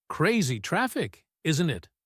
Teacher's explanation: When uses a falling intonation on the tag, he is asking for agreement.